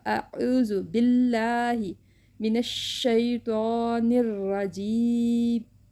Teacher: الف کی آواز تو آ ہی رہے گی، عین کی آواز کو ہم نے ہلکا سا گلے سے اسے حلق سے نکالا ہے، تو حلق سے نکالتے ہیں تو آواز چینج ہو جاتی ہے۔